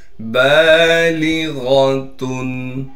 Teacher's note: ता पर तनवीन है, तनवीन को साफ करके पढ़ना है बगैर गुन्ने के। · लाम को बारीक करके पढ़ेंगे। गैन को मोटा करके पढ़ेंगे इसलिए कि गैन मोटे हरूफ में से है।